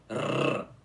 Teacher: Bom, esse som de R, que é forte, é pronunciado com a língua enrolada, vocês entenderam? Colocando a língua no céu da boca e depois tremendo ela em cima. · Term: R forte